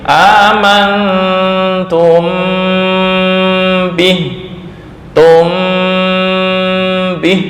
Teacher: Ada rongga antara dua bibir amantumh itu yang Mesir Suriah Saudi untuk mazhab Yaman itu tertutup bibirnya 100% diganti Mim